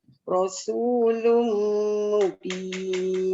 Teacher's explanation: Walaupun sama dengan sad, tapi sad dia keadaan dia tebal bandingkan sin nipis. · Sin nipis bunyi sofir sin. Rasul siulan.